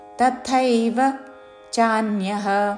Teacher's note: తథైవ ముందు అల్పప్రాణత తర్వాత మహాప్రాణ థ ఐత్వముతో